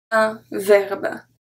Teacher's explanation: It's just the last, the final pronunciation of the B that make it sound like we pronounce the E, but we don't.